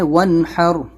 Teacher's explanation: نون ساکن کے بعد ہا حلقی لیٹر ہے، اظہار کرنا ہے